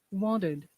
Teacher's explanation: The T sounds like flap T.